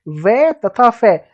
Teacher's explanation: इन व्यंजनों का उच्चारण करते समय दांत और होस्ट, दांत और ओष्ठ मतलब होठों का स्पर्श करते हैं, दांत और होठों का दोनों का स्पर्श होता है, वहां कौन सा व्यंजन होता है, दंतोष्ठ व्यंजन होता है